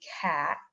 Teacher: Porque no momento que eles tentassem produzir cat, que agora eu estou produzindo com a oclusiva glotal, eles iam sentir uma pressão gerada na laringe, eles iam sentir ela subindo e descendo, vamos dizer assim.